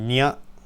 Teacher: the nya sound, which is sort of like an N a bit further back